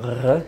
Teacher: J'ai fini par faire une sorte d'approximation que j'ai inventée, qui est R, c'est-à-dire au fond de la gorge. Et en plus, ne faites pas ça, c'est assez douloureux finalement.